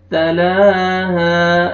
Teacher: लाम को खींचना है एक अलिफ के बराबर और अलिफ मद्दा, अलिफ से पहले ज़बर, हा को आपने खींचना है।